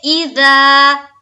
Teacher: ای کو جلد ادا کریں گے اور زا کو الف مدہ کرتے ہوئے ایک الف کے باقدر کھینچنا ہے